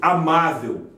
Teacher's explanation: paroxítona terminada em L, tem acento no má. Paroxítona é a penúltima sílaba acentuada, amável, a penúltima sílaba forte.